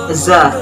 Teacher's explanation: Makhrajul huruf za terletak pada ujung lidah, berada pada halaman dua gigi seri bawah, sehingga suara za keluar di antara dua gigi seri atas dan bawah.